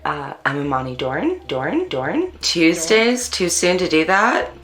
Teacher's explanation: african americans in california participate in local features such as ooh fronting and up talk